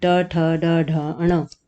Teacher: दांत से ज़रा सा ऊपर टच करते हैं जीभ को तो वो मूर्धा वाले वर्ण आते हैं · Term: मूर्धन्य